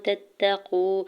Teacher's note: واو مدہ ہو رہا ہے، دو حرکت کھینچ کے ادا کریں گے